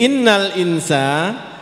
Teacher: nun mati bertemu dengan sa, kita baca dengung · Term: ikhfa